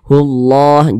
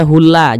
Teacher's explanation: maka lafaz Allah dibaca tabkhim, dibaca tebal. Sehingga dibaca tebal nih, hullah, jangan dibaca hulla, jangan, tapi dibaca hullah seperti itu.